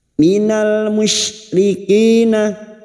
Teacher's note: bersukun atau alif lam yang bertemu mim izhar qamariah Minal musyrikina huruf syin wastul lisan atau Tengah lidah